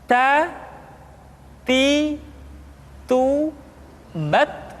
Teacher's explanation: Ta. Kemudian huruf ta ketika diucapkan terdengar ada nafas yang mengalir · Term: sifat al-hamas